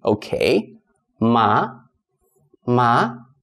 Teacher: it's a rising tone so it's a suggestion · this okay is different from a normal okay but it is like you're it's a rising tone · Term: second tone